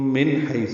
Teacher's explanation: سنستدرجہم من حیث، نون ساکن پہ اظہار حلقی. حی یا لین، ہا وسط حلق سے ادا کریں گے